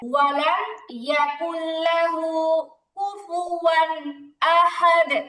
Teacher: লামের মধ্যে তাসদীদ দেয়া হলো এখন দুইটারে গুন্না ছাড়া মিলায় পড়তে হবে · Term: ইদগামে বাগুন্না